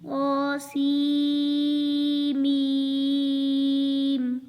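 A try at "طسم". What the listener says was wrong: अच्छा, इसको तासीम मीम पढ़ना है। सीन दरमियान में नून नहीं पढ़ना, सीन को डायरेक्ट मीम के साथ मिलाना है। मीम के ऊपर शद है। तासीम मीम।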